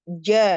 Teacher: tengah lidah ya menempel sempurna ke langit-langit